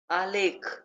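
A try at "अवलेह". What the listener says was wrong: हाँ आलेख नहीं, आलेह।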